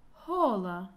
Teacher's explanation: произносится с придыханием, как небольшой выдох.